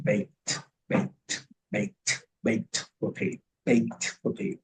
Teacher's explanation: En este caso es una T, porque viene después de la K.